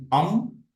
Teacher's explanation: we are actually also employing our nose so through nose and mouth we are pronouncing the letter